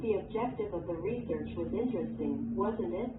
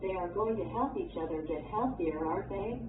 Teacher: When the speaker is making small talk and wants the listener to agree, the intonation of the tag question falls.